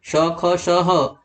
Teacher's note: अगर सघोष अघोष में देखते हैं तो ये जो चारों हैं श ख श ह, ये हैं आपके अघोष। अघोष क्योंकि इनको बोलने पर कोई टंकार सुनाई नहीं पड़ रही है